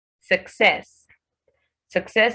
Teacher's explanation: Success is stressed on its second syllable, not the first syllable.